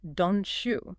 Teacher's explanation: The T and Y sounds blend and change into a ch sound. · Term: assimilation